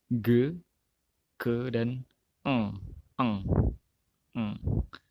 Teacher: lidah bagian belakang itu menyentuh itu velum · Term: velar